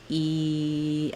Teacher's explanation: And to make the E, my tongue is up high, it's close to my front teeth, my mouth is not very open, it's a tense sound. E, I just have that one position, I hold it and continue it, and that's how I make that sound.